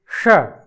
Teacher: जिसका उच्चारण हम मूर्धा से करते हैं इसलिए इसको मूर्धन्य षकार कहते हैं